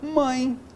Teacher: em mãe eu tenho a vogal AN, que é uma vogal nasal, né? E a semivogal, nesse caso, a semivogal I, ó.